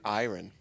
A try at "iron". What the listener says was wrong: It's iron. You're really punching the R through.